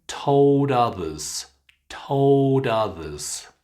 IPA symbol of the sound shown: ʌ